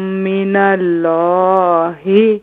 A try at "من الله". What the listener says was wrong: اللہ کے نام کو مزید پر کریں. اس سے آپ کی جو اللہ کا نام ہے نا یہ اور بھی اس کو فل ماؤتھ کریں.